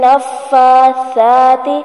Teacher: نفاثات ہی نہیں بنانا ورنہ یہ سین بن جائے گا اور معنی بدل سکتا ہے. تو سا ہمیشہ باریک پڑھا جاتا ہے اور نرمی سے پڑھا جاتا ہے · سا ہے نرمی سے پڑھا جائے گا، اس میں سیٹی کی آواز نہیں آئے گی. نفاثات ہی نہیں بنانا ورنہ یہ سین بن جائے گا اور معنی بدل سکتا ہے.